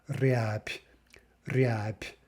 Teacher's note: we devoice the B to a p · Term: devoicing